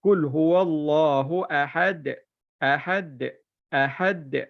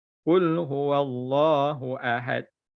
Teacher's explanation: lantunkan dal tu dekat hujung. Bila dia hujung dia mati, kena lantunkan. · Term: sifat qalqalah